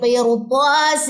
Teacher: را کو میں نے موٹا پڑھا، کیوں؟ چاہے را کے پیچھے زیر ہے لیکن آگے حروف مستعلیہ یعنی کہ طا آ رہا ہے، جو ہم نے لاسٹ 2 پوائنٹ پڑھے تھے نا را کی موٹی حالتوں میں، اس میں یہ پوائنٹ تھا کہ اگر آگے حروف مستعلیہ یعنی کہ موٹا کوئی حرف آ جائے تو آپ نے پھر را کو پر پڑھنا ہے.